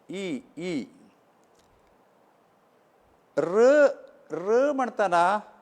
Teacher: ई म्हणटना आमकां कळटा जीब वचून ताळ्याक लागता